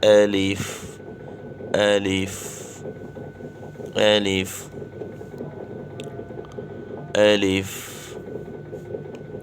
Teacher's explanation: یہ اس کا مخرج ہے بحالت مدہ، منہ کے خالی حصے سے، یعنی منہ کے خالی حصے سے یہ حرف پڑھا جاتا ہے